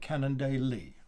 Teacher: you can just sort of brush over the day so long as you get that final emphasis on the e at the end of the word